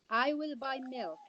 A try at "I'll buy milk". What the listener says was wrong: Don't forget to say I'll.